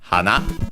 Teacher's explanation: accented on the last syllable when used on its own